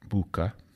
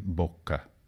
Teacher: the short u of latin has remained unchanged in sardinian bucca and sicilian but become a short o in italian bokke